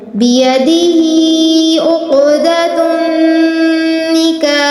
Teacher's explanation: قاف پر تفخیم ہے اور نون مشدد آیا ہے یہاں ہم نے غنہ کرنا ہے